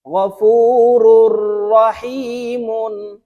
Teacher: তানুইন এর পরে র ইদগামে বেলা গুন্নার হরফ আসছে তাই এই র এই র এর সাথে গুন্না ছাড়া মিলাইয়া পড়তে হবে